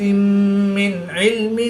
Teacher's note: نون ساکن کے بعد عین حروف حلقی میں سے ہے تو یہاں پر اظہار ہوگا، غنہ نہیں کریں گے بلکہ نون ساکن کو ظاہر کر کے پڑھیں گے